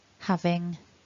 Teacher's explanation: having of course ends with that lovely ing sound up in the nose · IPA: /ŋ/